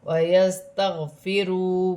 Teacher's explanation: واو ساکن سے پہلے پیش ہے، واو مدہ بنے گی، ایک الف کی مقدار کھینچ کر پڑھا جائے گا